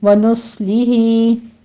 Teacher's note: صاد کے اوپر سیٹی کی آواز بھی آئے گی اور اس کو پر بھی پڑھنا ہے